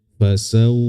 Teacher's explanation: Ada 2 huruf yang bersifat lin, waw dan ya, tapi punya syarat sukun kemudian didahului huruf berharokat fathah ya. Kalau dia waw sukun maka berhentinya di monyong mulutnya.